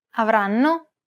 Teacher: The first N is held for roughly the same amount of time as all the other syllables. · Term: syllable-timed language